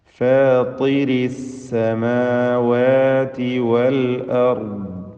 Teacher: റാ, ദ്വാദ് ഇവ രണ്ടും തഫ്ഖീം ചെയ്ത് ഉച്ചരിക്കേണ്ട അക്ഷരങ്ങളാണ്.